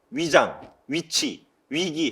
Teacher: 한국어는 위장, 위치, 위기 할 때 입술이 다 열려버립니다. 위 하면 입술이 열리죠.